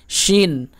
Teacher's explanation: এটি জিহ্বার মধ্যভাগ সোজাসুজি উপরের তালুতে লাগিয়ে বের হয়, শিন। আর এই বড় সিন, এটি জিহ্বার আগা, নিচের দাঁতের গোড়ার একটু উপর এবং আগার একটু নিচে, সিন। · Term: ছোট শিন